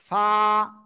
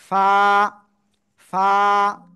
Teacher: নিচের ঠোঁটের পেট, উপরে দুই দাঁতের আগায় লাগাবেন, লাগে উচ্চারণ করতে হবে, একালিপ টেনে পড়তে হবে, আর একটু বাতাস বের হতে হবে কিন্তু